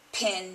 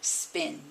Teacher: I also created an allophone from one of my consonants, the P sound, following the English rule that when the P sound begins a word, there's a puff of air, and when it follows a consonant at the beginning of a word, there's the puff of air swallowed.